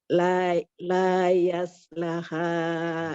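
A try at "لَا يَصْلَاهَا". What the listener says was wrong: La-nya 2 harokat. Ada alif.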